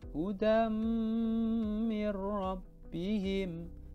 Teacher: tanwin bertemu dengan huruf mim maka ini merupakan bacaan Idgham Bighunnah cara membacanya itu harus didengungkan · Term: idgham bi hunnah